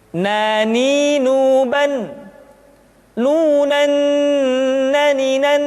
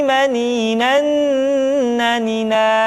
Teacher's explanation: caranya menyentuhkan ujung lidah kita diantara posisi roll dengan la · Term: huruf nah